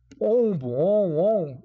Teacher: o seu nariz vai tremer Tá ok então você vai perceber que é nasalado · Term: om anasalado